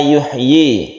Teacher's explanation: Nah, di kalimat ini kita harus perhatikan di kata-kata yuhyi, yaitu ya-nya ini harus jelas, ya-nya yuhyi, bukan yuhyi, tapi yuhyi. Y-nya ini harus jelas, dia berharokat kasroh yang panjangnya satu alif.